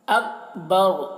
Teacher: کاف میں قلقلہ نہ ہونے پائے اس کا خیال رکھنا ہے